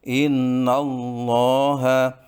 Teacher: sebelum lafaz Allah ada huruf yang berharakat fathah ya bacaan tafhim harus dibaca dengan tebal